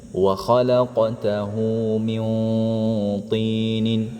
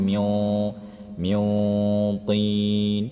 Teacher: Dibaca ikhfa disertai dengung yang tebal karena bertemu to.